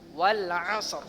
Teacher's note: Kemudian ro yang dia diwakafkan ya. Jadi ro-nya tebal. Jangan dibaca wal 'asri.